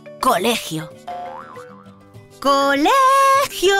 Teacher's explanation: La penúltima sílaba es la sílaba tónica, por lo que esta palabra es llana. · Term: palabras llanas